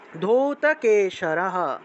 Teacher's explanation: ধয়ের নিচে দীর্ঘ উকার, তাহলে ধূত, ওকারটা দীর্ঘরূপে উচ্চারণ হবে